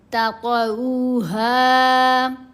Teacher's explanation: جب وقف کیا جائے گا تو ہا کے اوپر ہا کو ساکن نہیں کیا جائے گا بلکہ حرکت کے ساتھ ہی پڑھا جائے گا